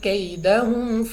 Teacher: یا ساکن سے پہلے زبر یا لین یعنی بغیر کھینچے پڑھیں گے جلدی سے